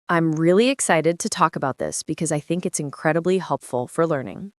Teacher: You try to copy the way she said reely excited and how her voice went up a little on helpful